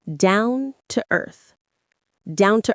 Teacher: The stress is pretty even, but maybe a little more on earth.